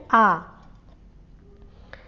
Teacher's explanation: विवृत word के उच्चारण में मुख द्वार जो है पूरा खुलता है।